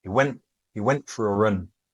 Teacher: We hear that the T disappears.